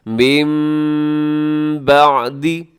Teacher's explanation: آواز کو ناک میں بھی لے کے جائیں گے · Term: اقلاب